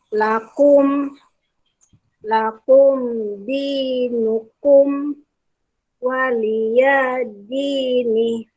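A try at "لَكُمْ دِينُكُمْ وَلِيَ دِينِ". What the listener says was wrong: Ya, jangan panjang. Walia. Waliyadini.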